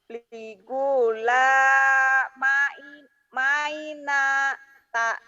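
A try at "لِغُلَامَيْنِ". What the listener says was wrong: Ligula maini bukan maina. Linnya ingat-ingat ya, nanti pelajaran diktat A2 udah belajar belum dulu? Nanti kayak gini. Aba, abi, abu, abau, abai. Ata, ati, atu, atau, atai. Ama, ami, amu, amau, amai.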